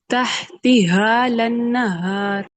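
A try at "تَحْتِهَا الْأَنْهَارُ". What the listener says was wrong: اچھا، جب آپ نے یہاں پہ زبر لگائی لام پہ، ٹھیک ہے، تحتی ہا، ہا لنہار کر دینا ہے، ہا پہ الف مدہ نہیں اپلائی کرنا آپ نے ادھر، تحتی ہا لنہار، ہا لنہار، ٹھیک ہے، تحتی ہا لنہار،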